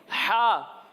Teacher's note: اسے حلق کے نچلے حصے سے پڑھیں گے